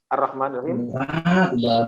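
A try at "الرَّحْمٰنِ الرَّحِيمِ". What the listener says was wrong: Ma-nya agak kepanjangan dikit. Ar-Rahmanir-Rahim. Bukan Ar-Rahmanir-Rahim, itu kepanjangan. Ar-Rahmanir-Rahim.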